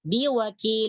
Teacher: Bertemu dengan huruf lam ya. Huruf lamnya kasroh tetapi ini tidak dibaca. Kenapa tidak dibaca? Karena diwaqaf. Nah, diwaqaf itulah yang disebut dengan sukun arid, sukun mendatang.